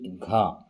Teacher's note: घ में जो जिव्या है वह तालू से नहीं टकराती है